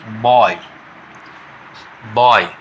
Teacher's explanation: बी O Y, तो बी O Y में हो जाएगा बॉय, बॉय, बी O Y, बॉय। तो इसमें दो दो प्योर भावल एक साथ मिला हुआ है, इसीलिए यह हो गया डिप्थोंग